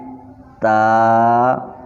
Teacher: تا کو ادا کرتے وقت آپ کی زبان کی جو نوک ہے وہ اوپر والے دانتوں کی بیک سائڈ پہ لگے گی